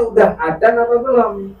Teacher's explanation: Kalau orang ngulon sebelah sono biasanya ngomong za jadi dal.